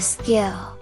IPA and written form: ˋskɪl (skill)